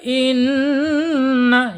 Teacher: gunnah ditahan 2 sampai 3 harokat